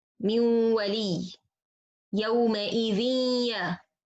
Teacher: I have sound ya and sound غنة, both of them at the same time equal, it's affect equal, 50% غنة, 50% the articulation point of this letter.